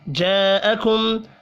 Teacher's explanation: جاءکم بڑی مد کو 5 الف کے برابر کھینچ کر پڑھیں گے